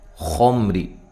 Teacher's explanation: خا کو موٹا ادا کرنا ہے، یہاں میم ساکن کا اظہار ہے، غنہ نہیں کریں گے، را کو باریک پڑھیں گے